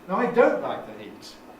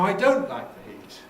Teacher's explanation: so we put the nucleus on the last of the new bit, which is now don't.